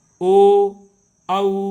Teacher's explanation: इनका उच्चारण करते समय हमारे होंठ जो है वो गोलाकार होते हैं, अर्थात वृत्ताकार होते हैं। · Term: व्रतमुखी